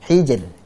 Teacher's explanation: Ini ra sukun, sebelumnya kasrah, berarti dibaca tipis. Hijr, tipis.